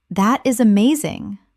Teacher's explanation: When you say, That is amazing, your tone rises with excitement.